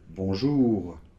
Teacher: on l'entend très légèrement puisque après, il n'y a pas de voyelle si vous voulez, donc ça fait juste ça, un petit [r] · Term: R en position finale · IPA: [bɔ̃ӡur]